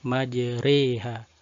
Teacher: Ketika membaca majreha, maka ra-nya dibaca tipis. Hakikat dari tipis, bagaimana dijelaskan pada pembahasan sebelumnya, yakni terangkatnya turunnya pangkal lidah ke bawah. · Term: imalah